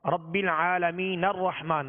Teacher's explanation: ہم نے نون کو را سے ملا دیا، اب حمزہ کی ضرورت نہ پڑی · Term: حمزہ وصلی